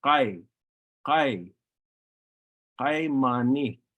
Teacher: It is not the same as the English letter K. The Numu K sound is pronounced using your uvula. Your uvula is that little thing hanging in the back of your throat.